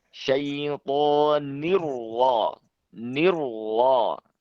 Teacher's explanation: karena roknya berharokat fathah, maka roknya harus dibaca tebal.